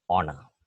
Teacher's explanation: when we pronounce this word the initial H is not sounded it's silent